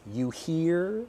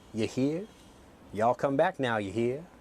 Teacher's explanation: I pronounce my R very, very strongly.